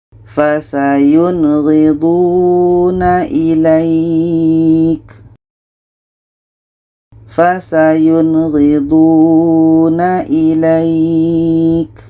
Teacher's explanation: Nun jelas, ghain jelas, dan tidak ada dengung. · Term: izhar halki